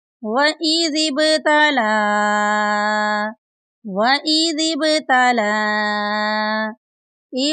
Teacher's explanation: یہاں پر دیکھیں زال کے بعد با ساکن ہے، با ساکن پر کلکلا کریں گے اور لام کے اوپر ماد ہے، اس کو لمبا کریں گے۔